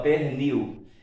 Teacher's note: a sílaba que nós pronunciamos com maior intensidade é a última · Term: oxítona